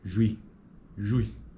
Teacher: Observe que em juizado, a primeira sílaba apresenta um ditongo que inicia com proeminência acentual na área vocálica de U